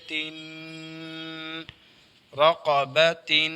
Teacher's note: زبر با رقب تا دو زیر تین رقبۃ دو زیر ہیں آواز نیچے ہوگی اور تنوین ہے ناک میں